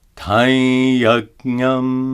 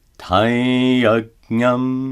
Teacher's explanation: Notice that the Anusvara is pronounced as a nasalized ya.